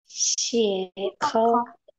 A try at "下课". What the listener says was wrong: হ্যাঁ, সিয়া খ নট সিয়ে, এটা উচ্চারণ কি সিয়া, সিয়া খ মানে হচ্ছে ক্লাস ইজ ওভার, ক্লাস শেষ।